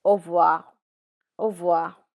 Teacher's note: R is normally silent when you're saying au revoir.